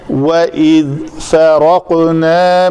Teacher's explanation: فا پتلے حروف میں سے ہے، را کو پر کرنا ہے